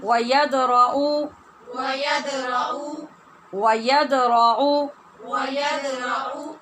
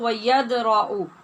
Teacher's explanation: یہاں پہ دال ساکن ہے اور اس پہ ہم نے قلقلہ کرنا ہے